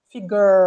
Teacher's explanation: Esse R tá com a língua para trás.